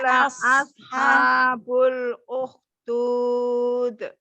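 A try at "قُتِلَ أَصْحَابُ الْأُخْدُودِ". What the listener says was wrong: So-nya ditebalkan lagi ya, dilatih ya. Lam sukunnya, alif lam qamariyahnya dialirkan aja. Qutila ashabul ukhdud. Jadi jangan terburu-buru, lam sukunnya diselesaikan. Ukhdud.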